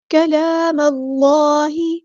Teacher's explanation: کاف باریک پڑھیں گے، لام پہ کھڑا زبر ہے تو مد اصلی کریں گے